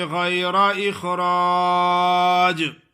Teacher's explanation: را الف را ہے اور جیم پہ قلقلہ ادا کرنا ہے